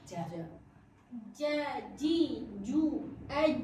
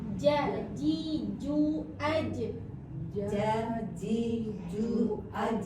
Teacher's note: Kalau Jim ini kan lidah kita si lidah tengah kita naik ke atas naik ja dia lebih kuat jahr dia kuat ja ja ja ji ju aj dia huruf qalqalah jadi mantul